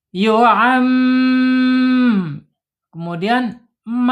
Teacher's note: Yuam tahan dua sampai 3 harakat ya. Gunah bukan gumah. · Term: ghunah